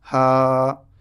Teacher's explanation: یہاں پہ الف مد ہے، تھوڑا سا ہا کو کھینچیں گے